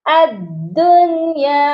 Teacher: حمزہ کو ہم نے دال کے ساتھ ملانا ہے، درمیان میں الف اور لام خالی حروف ہیں، ان کو ہم نے چھوڑ دینا ہے